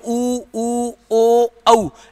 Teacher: अपना होठ है ना एक वृत्त के समान हो रहा है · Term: वृत्ताकार स्वर